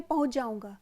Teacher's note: च का लोप हो गया सीधे हम बोलते पहुंच जाऊंगा चा नहीं सुनाई पड़ रहा है